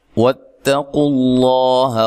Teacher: لفظ اللہ کو موٹا پڑھنا ہے، اس سے پہلے حرف پر پیش ہے